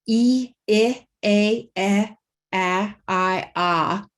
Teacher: So E is high front vowel, E, I, A, I, ah. And my jaw has gone down a step for each of these vowels. So by the time I get to ah, my jaw is open, my tongue is down.